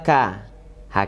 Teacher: kalau dia sukun itu ada mengalir nafasnya sedikit ya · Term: huruf K